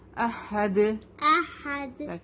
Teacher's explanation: اچھا اب دال سے یہ دو پیش ہٹ جائیں گے تو یہاں پر دال کے اوپر جزم لگ جائے گا اور دال ساکن لیٹر بن جائے گا. فائن. تو ہم یہاں پہ قلقلہ کریں گے